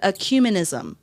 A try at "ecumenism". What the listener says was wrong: sounds like you're saying cumin, like the spice. Ecumenism. So he'd be like, "Oh, cuminism."